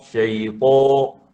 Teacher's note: Ta tu diangkat pangkal lidah.